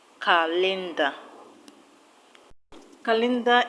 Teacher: calendar is a noun, so the stress will go to the first syllable